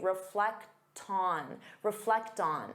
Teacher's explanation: Now, reflect on, because you have that T sound, you can transfer it to the next sound and say reflect on.